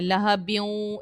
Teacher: تنوین کے بعد واو ہے، یہاں پر حرف یرملون کا واو ہے، ادغام کریں گے اگر آپ ملا کر پڑھ رہے ہو تب، اور غنہ بھی کریں گے